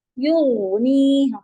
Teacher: غین کی آواز چلے گی، تھوڑا سا ٹائم دے دیجیے گا اسے